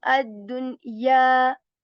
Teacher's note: Ya sound is prolonged for 2 counts because there is this alif coming after ya sakin